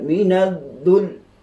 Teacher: kita agak sentap sedikit supaya kita nak menyatakan bahawa lam pada kalimah ad-dhul itu ada sabdu. Kalau kita sekadar baca waliyum minad-dhul, maka kita telah membuang sabdu tersebut.